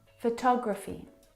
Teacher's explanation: the second syllable is the stressed syllable in this word photography.